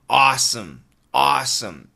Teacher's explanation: AW, awesome. It's not really som, it's more sm.